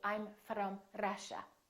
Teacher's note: that's called a rolling r that sounds like a foreign accent to american speakers